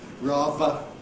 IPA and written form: ˈrɑːvə (rather)